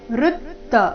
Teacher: ವೃತ್ತ ಋ ಮೇಲೆ ನೈಸರ್ಗಿಕ ಆಘಾತ ಬರಬೇಕು